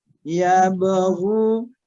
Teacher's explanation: Bila salah satu dari huruf qalqalah tersebut sukun, kalau sukunnya di tengah kata, nah, maka dia pantulannya atau qalqalahnya lebih sedikit, tidak terlalu kencang.